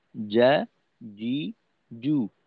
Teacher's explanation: জিহ্বার মধ্যখানের একটু সামনের অংশ হলো জিমের মাখরাজ